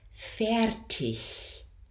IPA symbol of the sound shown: ɪ